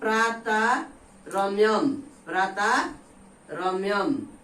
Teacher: विसर्ग का पहला वाला जो स्वर है वो दीर्घ हो जाएगा, यानी ह्रस्व है तो क्या हो जाएगा, दीर्घ।